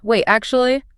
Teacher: when you said, Wait, you paused. Your voice dropped a little bit.